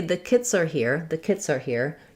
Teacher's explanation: you'll hear that S linking to the next word are.